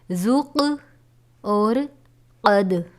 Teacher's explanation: یہ حروف قلقلہ میں سے ہیں، قاف اور دال. اسی لیے ہم نے اس کو ادا کرتے وقت حروف کو جنبش دی ہے